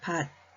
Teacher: 티읕 받침이 디귿으로 소리가 납니다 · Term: 음절의 끝소리 규칙